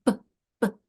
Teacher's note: Notice how the airflow is stopping. That's why it's called a stopper.